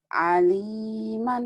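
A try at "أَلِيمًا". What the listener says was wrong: A biasa ya, A, A. Aliman, jangan ke ain.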